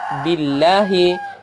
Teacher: Kemudian billahi itu adalah lafaz Allah di situ, dia dibaca tipis billahi karena sebelumnya berbaris kasrah